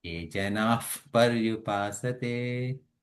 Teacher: So whenever visarga followed by pa, that fa sound comes.